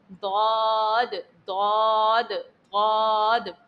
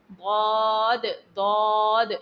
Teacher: زبان کے بغلی کنارے کو سامنے کے دانتوں میں نہیں لگانا بلکہ پیچھے کے جن دانتوں سے ہم پیستے ہیں، جن دانتوں سے ہم پیستے ہیں، ہم ان کی جڑوں میں لگائیں گے تو ہمارا ضاد نکل آئے گا